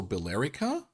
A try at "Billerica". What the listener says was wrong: No, so remember what we did with Haverhill? We ignore the E in the middle of a word. Billerica.